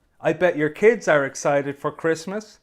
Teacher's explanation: Hear how my voice rises at the end for Christmas. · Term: rising intonation